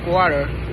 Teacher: water analysis British English may a clear t. American and Australian English use frequently the alveolar flap